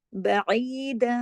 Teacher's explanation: आइन को आइन की तरह पढ़ना है, हमजा की तरह नहीं